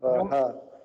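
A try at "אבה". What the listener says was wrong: No, you don't have to do a ha. It's a silent. At the end, the hey is silent. There's no pronunciation. It's a placeholder. There's grammatical reasons, but you don't have to pronounce it. Ava.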